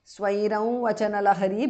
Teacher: Anuswara changes to the nasal of Va.